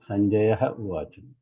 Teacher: Lopa means the Visarga disappears, it goes away, and it elides. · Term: Visargasya Lopaha